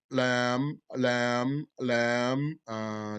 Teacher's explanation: Lam is a medium low letter of air suppression, mouth expansion, and dhalq, being on the edge. So medium, it's not a strong letter that stops the sound, and it's not a gentle letter that doesn't stop the sound.